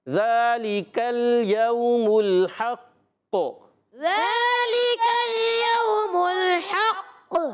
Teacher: قاف مشدد ذرا رک کر کلکلا کریں گے